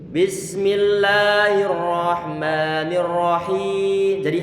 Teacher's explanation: pertama kita tidak memanjangkan kasrahnya kita baca rahim mustinya bukan begitu kita panjangkan kasrah pada bacaan Mad di sini baru kemudian setelah selesai pemanjangan Mad di situ baru kemudian kita